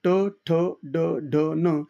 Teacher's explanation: मूर्धा ला आपला जिभेचा शेंडा टेकतो आणि त्याच्यातून जे काही उच्चार निर्माण होतो ते कोणते असतात तर ते मूर्धन्य असतात